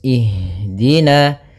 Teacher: pada lafal ha, usahakan di sini mengalir nafasnya dan lembut. Ada namanya jarayanu an-nafas.